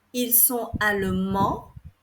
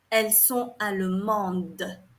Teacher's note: The pronunciation, you do not pronounce the S. It is mute.